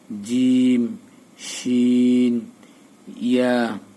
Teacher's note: জিবার মধ্যখান তার বরাবর উপরের তালুর সঙ্গে লাগাইয়া